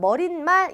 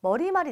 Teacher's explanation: 발음 자체가 니은 첨가되지 않아요. 머리말이 되겠습니다.